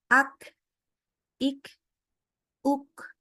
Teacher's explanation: Di mana kalau huruf qaf, kalau kita lihat daripada hembusan nafas, hembusan udara ketika keluar, itu ya, terutama kita rasakan ketika sedang sukun. Kalau untuk kaf dulu, kaf itu keluar udara.